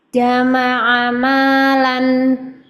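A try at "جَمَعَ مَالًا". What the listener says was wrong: Jama'ama. Jimnya kurang ke belakang sedikit. Benar-benar tengah lidah.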